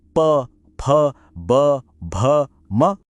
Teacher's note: यह आवाजें तब बनती हैं जब दोनों होंठ एक दूसरे से मिलकर अलग होते हैं। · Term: ओष्ठव्य, ओष्ठ्यव्य